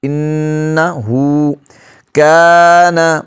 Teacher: ہا پر الٹا پیش ہے، تھوڑا سا لمبا کریں گے ایک الف کی مقدار